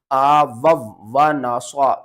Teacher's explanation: سواد کو آپ نے موٹا پڑھنا ہے